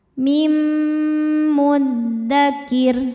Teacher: Sebab nun sukun menghadapi mim. Cara bacanya nun dimasukkan ke mim disertai dengungan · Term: idghamhunah, idgham bi gunnah